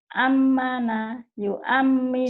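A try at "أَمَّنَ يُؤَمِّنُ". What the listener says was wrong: salah, di situ harus ditahan karena nun dan mim bertasydid itu gunnah. Ayo ditahan. Ammana yu'amminu.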